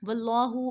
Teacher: حرف اللہ کو موٹا کر کے پڑھیں گے کیونکہ پہلے زبر ہے